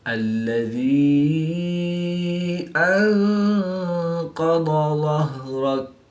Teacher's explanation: یا ساکن سے پہلے زیر ہے تو یا مدہ ایک الف یعنی 2 حرکات کے برابر کھینچ کر پڑھیں گے۔ نون ساکن کے بعد قاف حروف اخفا میں سے ہے تو یہاں پر اخفا یعنی غنہ زمانی کر کے پڑھیں گے۔